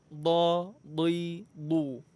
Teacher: Makhrajnya itu pertemuan antara tepi lidah dengan pangkal gigi geraham atas. Boleh sebelah kanan, boleh sebelah kiri, boleh juga dua-duanya. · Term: huruf dad